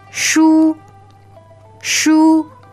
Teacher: S-H-U, first tone, 书. All right, so that's high and flat.